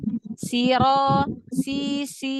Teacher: Sin adalah huruf istifal huruf tipis jadi pangkal lidah tidak terangkat suara tidak naik ke langit-langit